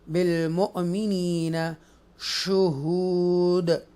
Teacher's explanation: اظہار شفوی ہوگا یہاں پر, اور یہ جو ہے الف مدہ ہے, واو مدہ ہے, حمزہ ساکینہ ہے, ٹوچ کریں گے, جڑک سے پڑھیں گے, جھٹکے سے پڑھیں گے. بالمؤمنین یہ یا مدہ ہے اور واو مدہ ہے اور حروف قلقلہ ہے.